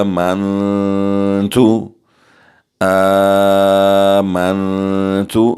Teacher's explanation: نون ساکن کے بعد تا ہے، یہاں ہم اخفا کریں گے اور غنہ بھی کریں گے۔ آواز ناک میں لے جا کر 2 سیکنڈ کے لیے غنہ بھی کریں گے اور اخفا بھی کریں گے، کیونکہ تا حروف اخفا میں سے ہے اور نون ساکن ہے۔